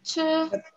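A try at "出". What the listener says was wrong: Abre un poquito más la boca, para que no suene como boca cerrada, ¿verdad?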